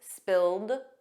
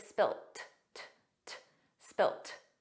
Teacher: In American English, it's always spilled, a soft D, but in British English, it's spilt